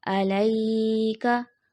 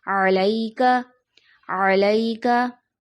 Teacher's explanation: या साकिन उससे पहले ज़बर या लीन, जिसको जल्दी से पढ़ा जाता है , यहाँ पे इसको गलती में खींच दिया जाता है, जैसे